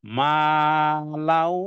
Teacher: এবার আমি ওয়াও কে ভালো করে ধরবো গুন্না সহ করে ধরবো মা লাউ এই গুন্নাটার নাম হলো এদগামে বা গুন্না মা এদগাম